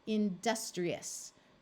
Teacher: this I is going to take on a long e sound